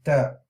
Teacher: Ta is right at the gums at the upper incisors, the tip, the root.